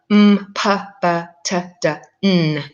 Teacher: those sounds that are made in the front of the mouth with either the tongue tip or the lips